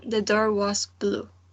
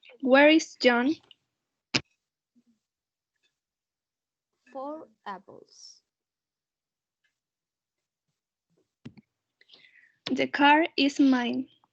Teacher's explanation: the r sound is pronounced to make a kind of a smooth link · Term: linking r